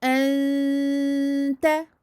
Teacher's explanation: Le son doit sortir de deux endroits et de la bouche et du nez. · Je vais dissimuler le noun derrière le ta, en cacher une partie. Il ne va rester du noun que sa runna ou nasalisation. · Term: runna amincie, ikhfa